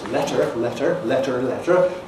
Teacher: you had an R-coloured schwa in words like letter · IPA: /ˈletɚ/